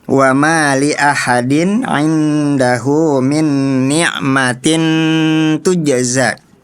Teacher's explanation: walaupun dibacanya samar tapi ikhfanya tetap ditahan ya